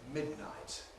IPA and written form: ˈmɪdnaɪt (midnight)